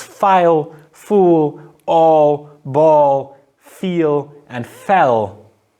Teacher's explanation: a dark L, a velarized version of L that occurs at the end of syllables